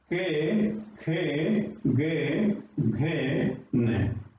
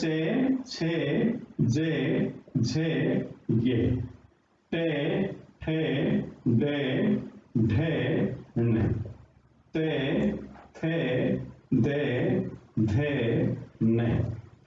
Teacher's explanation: अब जो कै वर्ग है इसका उच्चारण स्थान कंठ, चे वर्ग का उच्चारण स्थान तालु, टे वर्ग का उच्चारण स्थान मूर्धा, ते वर्ग का उच्चारण स्थान दंता